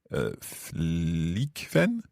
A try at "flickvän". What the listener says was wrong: Perfekt.